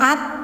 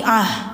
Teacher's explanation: ketika mati suaranya menjadi ha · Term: ta marbutah